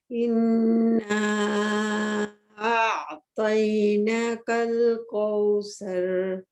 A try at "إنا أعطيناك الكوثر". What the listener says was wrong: نا کو نا 2 حرکت کریں. یہ کھڑی زبر ہے ایکچولی. کوثر واو راؤنڈ.